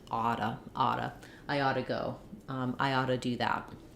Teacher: my T now suddenly is in between two vowels like it was in onomatopoeia and it becomes a flap it sounds more like a d · it becomes a flap. It sounds more like a D. Then we end up with oughta, oughta.